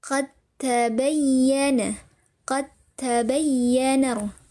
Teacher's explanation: Dengan dileburkan langsung kepada huruf t-nya. Jadi bunyi dal sukun atau pantulan dari huruf dalnya ditiadakan.